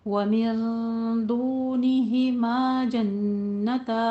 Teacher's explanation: वमिन दूनिहिमा जन्नतान, मिन दूनिहिमा में इख्फा की नून साकिन का कायदा, दूनिहिमा में वाव मद्दा अलिफ मद्दा, जन्नतान में गुन्ने वाजिबा। सबको टू टू काउंट करना है